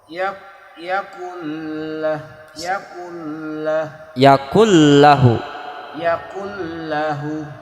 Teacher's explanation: bacanya jangan kayak idgham biguna, jangan ditahan, tekan langsung yakullahu. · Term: idgham bila guna